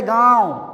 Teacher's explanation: अनुनासिक जो होते हैं यह नाक और मुंह से मिलाकर बोले जाते हैं